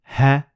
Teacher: Ha is produced through letting a gush of air through your vocal cords. We also call it the vocal folds.